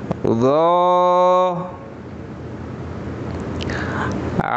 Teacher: জিহ্বার আগা সামনের উপরে দুই দাঁতের আগের সাথে লাগবে, মোটা করে বলতে হবে।